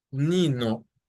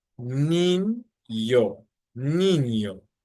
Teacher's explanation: this letter gives you the N sound accompanied by a Y sound, that Y from yes, that Y sound